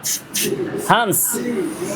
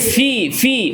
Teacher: আমি ফাতে আওয়াজটা ধরে রেখেছি, বাতাসটাকে জারি রেখেছি